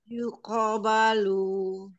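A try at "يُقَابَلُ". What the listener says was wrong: Lagi kofnya latihan yuk. Yuqobalu.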